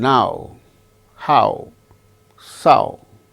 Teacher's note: Then ow sound starts with strong ends with u